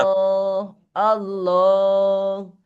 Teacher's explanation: আল্লাহ শব্দের লামকে পুর করে পড়তে হয় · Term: মোটা